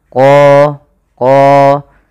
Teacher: Pada lafal qalu ud'u lana, pada lafal qalu di sini ada hukum tajwid berupa bacaan mad tabi'i, yaitu pada lafal qa yang dimana huruf qa ini harus kita tebalkan qa, karena dia punya sifat huruf isti'la